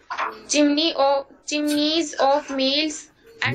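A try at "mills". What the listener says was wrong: मिल्स नहीं है वो, मिल्स है। अरे मिल्स है वो, मिल्स नहीं है। अरे मील नहीं है ना, तो तू छोटी की और बड़ी की मात्रा नहीं समझती क्या? तेरे को छोटी और बड़ी की मात्रा में अंतर समझ में नहीं आता है क्या?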